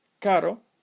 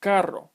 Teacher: two words one using the simple Trill and the other using the multiple Trill